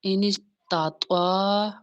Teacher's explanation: طوا الف زبر تا اور طوا میں فرق کرنا ہوتا ہے۔ طوا موٹا پڑھا جانے والا لفظ ہے، طوا حرف مستعلیہ میں سے ہے ، اینس تطوا، عین پیش معو، او میں واو مدہ ہے،